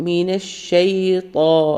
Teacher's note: ത് ഉയർത്തി പറയാം നല്ല ഹെവി അക്ഷരമാണ് ത് ഉയർത്തി പറയുക മിനശൈത്താ ത് പറയുമ്പോൾ ചുണ്ട് റൗണ്ട് ആക്കാതെ തന്നെ പറയാൻ